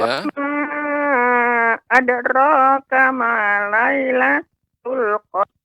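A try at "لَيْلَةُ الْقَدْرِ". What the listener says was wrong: Lailatul Qadar. Cepat pengucapannya cepat Nenek. Lailatul Qadar. Qadar. Qadar.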